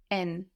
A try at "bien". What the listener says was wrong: We know too much about French to pronounce E-N, N. No, we have the N on the end. We're swallowing that into the vowel before, into that E, so it sounds like bien, bien.